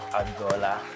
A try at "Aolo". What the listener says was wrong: Actually, the name is Aolo, not Agbola. Mary Ronye Aolo. You know, it's AGH. The G is silent. You pronounce the H.